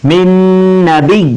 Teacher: غنہ کے ساتھ میں یعنی آواز کو ناک میں چھپا کر پڑھیں گے